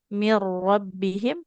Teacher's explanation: Di atas rnya ada tasydid. Nun sukun ketemu ro idgham bila ghunah. Jadi melebur langsung ke huruf rnya.